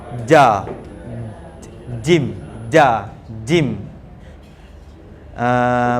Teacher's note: Jim bahagian atas lidah akan menyentuh lelangit mulut kita